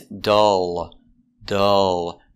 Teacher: And the L is a dark L. It's in the back.